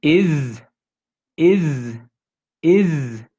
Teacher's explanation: not east it's not voiceless it's voiced yeah is is is there should be vibration in that s · There should be vibration in that S. It's not is, it's is.